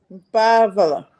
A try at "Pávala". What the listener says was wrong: Não, Pávala. Não, no fim não pode ser muito rápido.